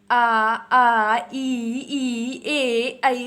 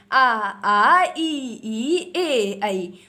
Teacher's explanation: ऐसे स्वर जिनका उच्चारण करने पर आपके जो होंठ हैं उनकी स्थिति गोल बिल्कुल भी नहीं होगी। तो एक बार बोल के देख लीजिए, आ ई ए आई। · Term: अवृतमुखी